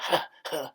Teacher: Not with the S, but huh, huh, in the back of the throat.